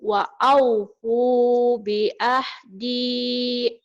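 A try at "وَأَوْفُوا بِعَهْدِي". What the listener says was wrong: Hadirnya belum kena tuh. Wa'aufu bi'ah. Dadanya dipegang bergetar, bi'ahdi.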